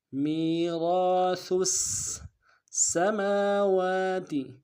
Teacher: مقدار میں کھینچیں گے، سا کو سین کے ساتھ ملانا ہے، سین کے اوپر تشدید ہے زور دیں گے، سا کو باریک ادا کریں گے